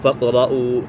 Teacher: فاقرؤوا قاف کے اوپر کلکلا ہو رہا ہے، فاقرؤوا ما تیسر من القرآن قاف پر ہے کیونکہ قاف حرف مستعلی میں سے ہے، اور را بھی پر ہے، را سکن سے پہلے زبر پیش ہے تو را پر ہوگی۔